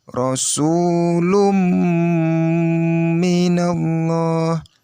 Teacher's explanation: Maka ini domatain mendapat bertemu dengan huruf mim. Maka nanti kita dengungnya di mim, bukan di domatainnya. Cara membacanya ialah Rasulum minallah.